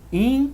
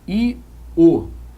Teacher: A vogal é um som mais forte do que a semivogal. Então observa que o ditongo começa com um som fraco e termina com um som forte. Está ganhando força. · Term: ditongo crescente